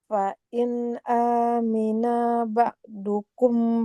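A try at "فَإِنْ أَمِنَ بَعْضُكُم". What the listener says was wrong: Hamzahnya hamzahnya enggak boleh panjang di sini. Hamzahnya fathah tidak bertemu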